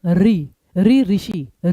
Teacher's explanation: फिर आता है आपका री ऋषि, री का स्वर, री के लिए जीभ को मोड़ेंगे र की भांति तो यह आएगा आपका मूर्धन्य में